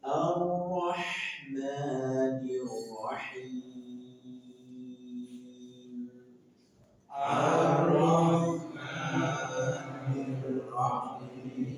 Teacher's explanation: Nada dua itu datar. Nada dua itu datar.